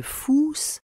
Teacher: il transcrit le ou long et fermé de fous